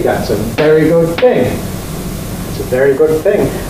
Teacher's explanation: good loses its stress because it's in the middle of two other ones